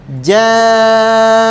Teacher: muttasil ya mad wajib muttasil hukumnya dipanjangkan 4 sampai lima lima harakat